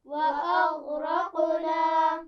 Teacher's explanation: غین را اور قاف تینوں موٹی آوازیں ہیں اور قاف پر جزم ہے یہاں پر، تو یہاں قلقلہ ہونا ہے